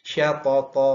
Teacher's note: toknya berharokat fathah tanwin diwakafkan jadi fathah panjang